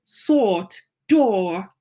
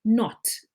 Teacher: we have the long one o, sort door and then we have the short one not o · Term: short o sound